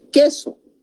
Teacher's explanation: no es diptongo porque esta U no se está pronunciando